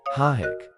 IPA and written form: haɪk (hike)